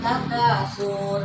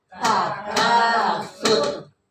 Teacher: ini enggak ada wau ya jadi enggak boleh dipanjangin